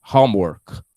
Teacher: the stressed syllable is in the word home